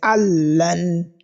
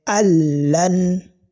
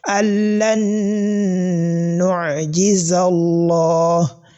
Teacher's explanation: The type of a rule that we can identify on this nun sakina, that is, I said allan because we've not had the sound of the nun. It is the sound of the lam that we've had. So I said allan, that is idghamun kamil.